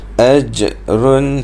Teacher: Falahum ajrun di sini ada jim yang mati, maka dia jadi qalqalah sughra. Ajrun, pantulkan huruf jim tu.